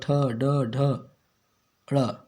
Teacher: कठोर तालु के मध्य का भाग मूर्धा कहलाता है। जब जीभ की उल्टी हुई नोक का निचला भाग मूर्धा से स्पर्श करता है तो ऐसी स्थिति में उत्पन्न ध्वनि को मूर्धन्य व्यंजन कहते हैं।